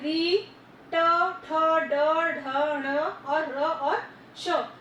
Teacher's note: री, ट, ठ, ड, ढ, ण और र और श, ये सारे मूर्धा हैं। यानी कि जहां पर आपके ऊपर के तालु को ट्विस्ट करके बोला जाता है, ये वर्ण निकलते हैं, वो मूर्धन्य कहलाते हैं · जो जीभ होगी आपकी ट्विस्ट होगी, थोड़ी सी मोड़नी पड़ती है, सीधी जीभ टच नहीं कर सकते हो आप